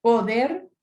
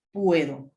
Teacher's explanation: po utiliza una vocal fuerte o, al conjugar ya dice puedo, utiliza una diptongación, ue